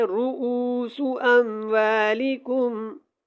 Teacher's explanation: اس لفظ کو آپ نے غور سے پڑھنا ہے، رؤوس، اس کو ایسے نہیں پڑھنا، را کو لمبا نہیں کرنا، او کو لمبا کرنا ہے